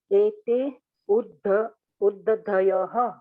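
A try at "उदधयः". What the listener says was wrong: Not Udda. There is no Udd. Uddadayaha. Uddadayaha.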